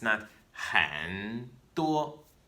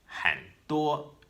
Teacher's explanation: It's a half third tone. That rising part gets cut away.